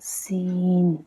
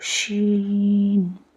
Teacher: लेकिन वही जगह जब पूरा फुल ये में सीटी लगती है, जब हल्का सीटी लगना सी सी सी करती है ना, उसी तरीके से आपको सीन बोलना है। और जब पूरी तरीके से सीटी मारती है ना तो शीन।